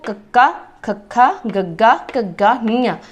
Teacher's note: ये सारे जिहड़े व्यंजन ने कक्के वर्ग वाले उहनूं कोमल तालवी व्यंजन कहा जाता।